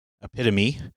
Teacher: it has the long E sound at the end and also a offbeat syllable emphasis